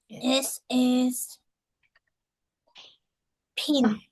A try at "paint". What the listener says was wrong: Paint. Paint. Paint. It's longer A.